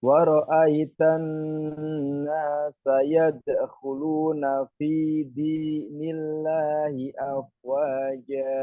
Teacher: Wa ra'aitan, tan itu guna. Nun tasdid, bacaan guna. Itu mendengung, ya, didengungkan.